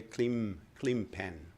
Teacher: people pronounce the N in clean pen differently and more like an M